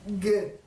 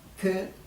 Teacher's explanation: quand on dit G, ça s'appelle une gutturale sonore, et quand on dit que, c'est la même chose, mais sourde